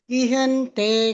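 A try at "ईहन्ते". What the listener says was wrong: ಮಾತಾಜಿ ಅದು ದೊಡ್ಡ ಈ ಇರೋದು ಈ ಹಂತೆ ಅಂತ ಹೇಳಬೇಕು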